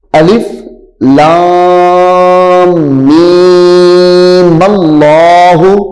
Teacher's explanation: اب میم کو جو ہے لام کے ساتھ ملانا ہے. اس میں جلالت اللہ کی جو لام ہے اس کے ساتھ ملا دینا ہے. درمیان سے الف ختم ہو جائے گی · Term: وصل